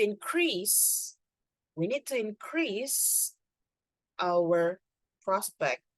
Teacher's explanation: The increase, so the stress is in, okay? However, when you talk about the verb, the stress is in the second syllable.